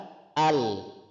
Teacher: Kita contohkan huruf lam disukun, itu pita suara tertutup. Cara bacanya adalah al, terdengar jelas di pendengaran. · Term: jahar